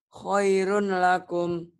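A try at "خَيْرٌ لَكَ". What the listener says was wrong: Khairul laka. Nggak ada lakum. Khairul laka. Khairul laka ya. Idgham.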